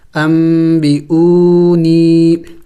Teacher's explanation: جب نون ساکن اور تنوین کے بعد با آ جائے تو پھر وہاں وہ نون ساکن اور تنوین میم سے بدل جاتا ہے تو یہاں پہ بھی نون ساکن یہ میم سے بدلا ہوا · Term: اقلاب